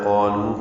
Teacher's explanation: قاف الف مدہ پر ہے، لو واو مدہ ہے، 2 حرکات لمبا کریں گے